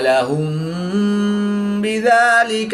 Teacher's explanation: میم ساکن کے بعد حرف با ہے تو یہاں پر اخفاء شفوی ہوگا یعنی غنہ زمانی کر کے پڑھیں گے